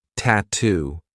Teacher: We have two true T sounds, T and then two.